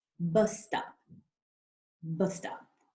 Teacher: in the case of bus stop, the consonant is the same letter, S, right? So again, we're not saying that twice